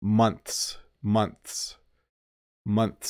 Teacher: I'm pulling my tongue in and making an S sound when I say the plural